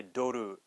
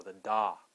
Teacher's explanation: we don't have the true o sound we have the flat o